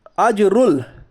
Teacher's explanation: अजरुल, अलिफ लाम तारीफ के बाद हुरूफ कमरी के 14 हरफों में से हमज़ा है इसलिए इजहार कमरी होगा, यानी अलिफ को ना पढ़ के बल्कि लाम को ज़ाहिर करके पढ़िए। जीम के ऊपर जज़म है, जीम हुरूफ कलकला के 5 हरफों में से इसलिए जीम पर कलकला होगा।